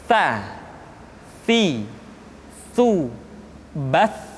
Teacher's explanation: Sa dikeluarkan dengan menyentuhkan ujung lidah kita dengan dinding dua gigi seri bagian atas. Diucapkan dengan suara dan nafas yang terdengar mengalir. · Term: huruf sa